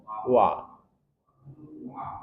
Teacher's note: kemudian ww dua bibir atas bawah dibulatkan wa maka perhatikan betul ketika kita mengucapkan huruf wawu harus monyong dahulu